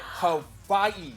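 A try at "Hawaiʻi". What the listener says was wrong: Not Hawaii. Hawaii. That's how it's pronounced. Yep, it's pronounced with a V.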